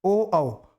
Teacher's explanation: plus कंठ गला और होठ से कैसे होगा ओ औ तो ओ औ में बोलते समय क्या हुआ गला भी यूज हुआ और होट का होट भी जो है यूज हुआ